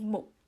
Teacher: the underlying form of muk is mukka. There's a hidden A. So this hidden A disappears because of this phonological rule. It's at the end of a word, so you delete it. So it just becomes muk. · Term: word final deletion